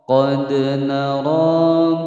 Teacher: Qad, di sini ada dal berharokat sukun asli berada di tengah-tengah kalimat, dipantulkan hukum bacaan qalqalah sughra. Qad nara ra panjang dua ketukan, ra dibaca tebal, ra ra.